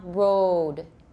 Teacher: let's cut off the second part of the diphthong